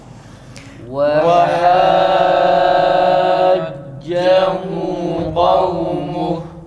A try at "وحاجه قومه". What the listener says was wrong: Tekrar ötre u çıkmasın, o çıkmasın.